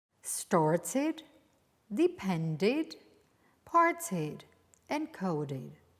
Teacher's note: Whenever a regular verb finishes in t or d, you will pronounce the added ed ending in the past as id